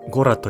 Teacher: This word has an accent on the first O and a D sound at the end, so it is pronounced go-rat.